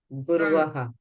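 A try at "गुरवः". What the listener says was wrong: Here also you should be careful about the ukara. Guravaha. Guru, Guravaha.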